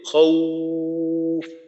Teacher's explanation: টানটা হবে, টানটা ঠোঁট গোল করে, খৌফ। আমি যতটুক টানবো, যদি একালিফ টানি তো একালিফ সময়টা, একালিফ পরিমাণ সময়টা ঠোঁটটা গোল রেখে পরে এই উচ্চারণটা করতে হবে।